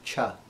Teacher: the palatal sounds are made at the back of the hard palate in the back of the mouth with the top of the tongue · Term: palatal consonants